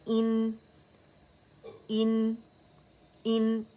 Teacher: ایک ہی بس کاؤنٹ کے لیے نون پہ جائیں گے, اس کا اظہار کریں گے, ٹھیک ہے. ان اکیلا پڑھ رہے ہیں اس لیے اظہار کر رہے ہیں ان.